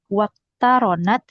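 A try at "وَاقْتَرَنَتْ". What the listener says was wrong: Iya, waqtaronat betul.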